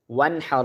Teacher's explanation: نون ساکن ہے، ساکن کے بعد ہا آ رہا ہے حروف حلقی میں سے، اب اس کے اوپر ہم اخفا نہیں کر رہے